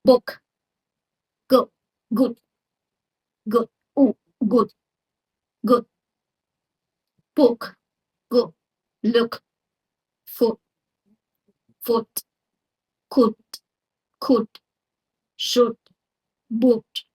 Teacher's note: The oo sound is a short high pack in American English. It's not a tense or long as ooh which we hear in words like food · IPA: ʊ, [ʊ]